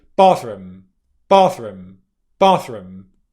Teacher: So if I say it quickly, bathroom, bathroom, bathroom, what you'll hear is there's more of a stronger pronunciation of the R sound and slightly less pronunciation of the th